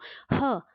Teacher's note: ह बोल के देखिए, ह में ज़्यादा वायु निकल रही है, इसका मतलब ये क्या हो गए? हमारे महाप्राण हो गए।